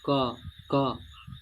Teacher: हो जाएगा इसी को हम लोग कहते हैं अघ व्यंजन ब स्वर तंत्रिका परस्पर झंकृत नहीं होती है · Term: अघोष व्यंजन